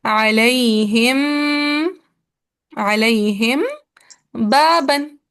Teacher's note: तो अलैहिम, मीम साकिन के बाद बा आ रहा है। तो यहाँ पे हमें नरमी से होंठों को मिलाना है